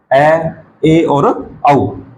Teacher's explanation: तो अर्धविवृत अर्थात मुंह है आधा खुलने की स्थिति, मुंह है आधा खुलने की स्थिति, ऐसा लगेगा जैसे हमारा मुंह आधा खुला हुआ है